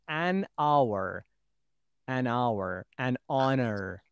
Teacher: Because of this pronunciation, because of this reading, we say use an, not a, before the words beginning with H. That H is not pronounced, like an hour, an honor.